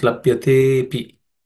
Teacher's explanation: Labhyatepi becomes labhyate and api becomes labhyatepi. The a in the second word becomes silent, and the te gets elongated. Okay, labhyate api becomes labhyate pi.